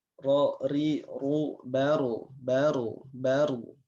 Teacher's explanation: ujung lidah masuk sedikit ke bagian punggung dari ujung lidah yang menempel ke gusi bagian atas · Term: huruf ro